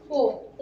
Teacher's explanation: ओ जो वर्ण है इसका उच्चारण स्थान कंठ और ओष्ठ होता है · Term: कंठोष्ठ